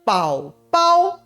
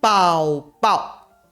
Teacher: 母语者通常会把它发成3声和1声的宝宝，而不是字典里3声和轻声的宝宝